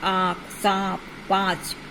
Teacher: इस ध्वनि का उच्चारण मुख और नाक की सहायता से होता है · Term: अनुनासिक